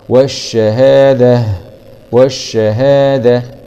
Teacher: أي تاء مربوطة نقف عليها بالهاء